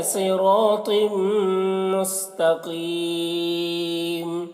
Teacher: तनवीन के बाद हुरूफ़ यूमिन में से मीम है तो इदगाम नाकिस होता है